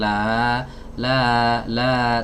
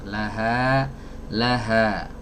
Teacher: jadi huruf H itu keluarnya dari aqsal halqi, tenggorokan yang paling jauh, yang paling dalam, yaitu tepatnya di pita suara.